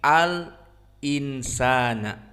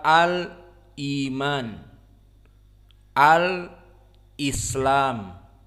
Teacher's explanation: maka Manhaj dari khalaf an Hamzah ketentuannya adalah kemudian disambung maksudnya dibaca Al kemudian di diamkan beberapa detik kemudian hamzahnya dibaca